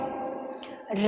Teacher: र को वतसर लुंठित और दंत मूल भी कहा जाता है